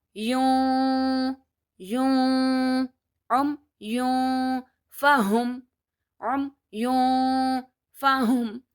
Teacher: I have to hide the sound of yun, and to hide the sound, I have to make a sound in my nose, and I will not touch my tongue anywhere in my mouth. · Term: ikhfa